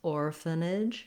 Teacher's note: So you may be more likely to hear a bit of an sound for that schwa in this word. Definitely 3 syllables, orphanage, with our length on the first